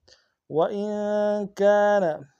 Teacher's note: وَإِن میں نون ساکن میں غنہ کریں گے، کاف الف مدہ ہے۔